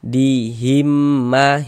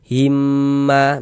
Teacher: Ini mim sukun setelahnya huruf mim, hukumnya idgham mimi. Cara membacanya dengan cara memasukkan ya, kemudian disertai dengan dengung.